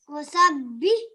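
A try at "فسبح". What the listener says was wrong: So pronounce this letter as fa. Fa. Fasabih. So here we have the ba as a mushaddid letter because it carries a tashdid.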